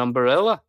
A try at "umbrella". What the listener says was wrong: You put an extra syllable in there, an umbrella. An umbrella. Yeah, I just go umbrella. Umbrella. I don't think it's umbrella. I think it's umbrella.